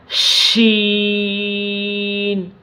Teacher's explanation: زبان کے درمیان اور اوپر کے تالو کے درمیان سے یہ شین ادا ہوگا